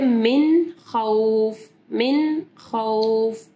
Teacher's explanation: پھر نون ساکن کے بعد ایک خا ہے، ٹھیک ہے، من خوف، من خوف۔ تو نون جو ہے ہم لوگ کلیئر پڑھ رہے ہیں، یعنی ہم لوگ من نہیں پڑھ رہے، ہم لوگ من خوف۔ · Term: اظہار